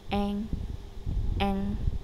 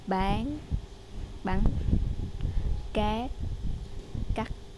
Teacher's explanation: with a n, a is going to be long and n is short and with the other wod, a will be short and n will be long